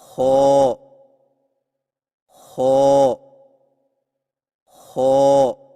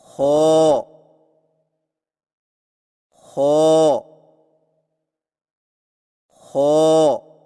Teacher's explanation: خو کی ادائیگی میں زبان کی جڑ کو تالو کی طرف بلند کرتے ہوئے موٹی آواز میں پڑھیں